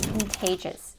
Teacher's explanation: The stress is on the second syllable. We have the K, the schwa, and the N, con. Then we have the T and the A diphthong, contay.